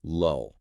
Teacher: that final L is a dark L. To make that sound, you have to raise the back of your tongue slightly.